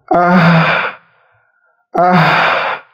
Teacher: Huruf ha sukun harus dikeluarkan angin pula ah ah jadi anginnya lemah dan tidak terlalu kuat